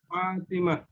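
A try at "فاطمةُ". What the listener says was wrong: Harokat akhirnya jangan disukun ya.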